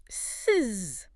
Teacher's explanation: You should feel an undeniable, distinct vibration. It's a buzzing sensation pushing right against your skin. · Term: voiced sound